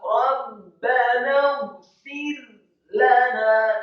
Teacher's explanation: Rabbana fir lana, kata fir lana, fa yang kasrah satu harokat, kemudian huruf ro yang sukunnya dibaca tipis, tidak Rabbana fir lana, salah, yang benar adalah Rabbana fir lana, kata fir lana, ro-nya dibaca tipis karena sebelumnya adalah huruf fa yang harokatnya kasrah.